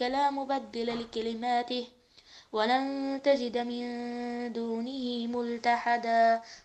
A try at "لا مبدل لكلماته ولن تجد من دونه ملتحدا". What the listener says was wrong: قراءة جميلة جدا، لكن يبدو أنه مستعجل، يعني القراءة بالتروي.